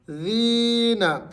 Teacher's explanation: یا مدہ کو آپ نے ایک الف کی مقدار کھینچنا ہے۔ ذین، وَإِذَا لَقُوا الَّذِينَ آمَنُوا، یہاں پر آ اس کے اوپر کھڑا زبر ہے، تو آپ نے اس کو ایک الف کے برابر لمبا کرنا ہے۔